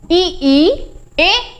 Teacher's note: अग्र भाग के अंतर्गत ई ए को रखा गया है। आप बोल के देखिए ई ए ऐसा लग रहा है जीभ के आगे वाले भाग से, यहां से आपका ये निकल के आ रहा है, ठीक। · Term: अग्र स्वर